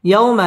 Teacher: জজমুল ওয়াও লিনের হরফ তাড়াতাড়ি পড়তে হবে